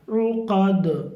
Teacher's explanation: عین پہ پیش ہے اور اس کو حلق سے بولیں گے عقد. دال پہ بھی قلقلہ ہوگا.